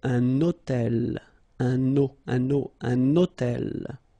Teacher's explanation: So you can see that I'm making this little liaison, this little link between the two.